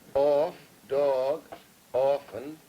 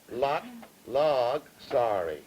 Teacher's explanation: off, dog, often with aw vowels and lot, log, sorry with ah vowels